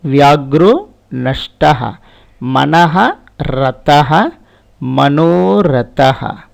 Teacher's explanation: the preceding a and visarga will become o. That means Vyagraha will become Vyagru, and following soft consonant no change.